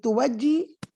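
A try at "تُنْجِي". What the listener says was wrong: نہیں توجی کیوں واو تو نہیں ہے نا نون ہے نا تنجی ہے نا تنجی انجی نون ہے واو آپ شاید نکل رہا ہے آپ کے منہ سے واو نہیں ہے نون ہے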